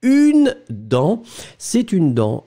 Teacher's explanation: On est d'accord, le T final n'est pas prononcé, vous prononcez uniquement la nasale